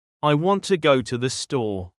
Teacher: In this sentence, want and store are stressed.